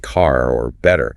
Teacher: It means that the R sound at the end of words like car or better is very subtle, almost silent. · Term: non-rhotic